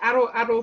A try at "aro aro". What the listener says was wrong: Just watch your O's. Aro. So try and not go back to the English sound of the letter O. So it's not aro. It's aro.